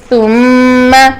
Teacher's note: میم دونوں ہونٹوں کے خشک حصے سے ادا ہوتا ہے اور بر خشک حصے کو کہتے ہیں، تو اس وجہ سے میم کا نام بری بھی ہے.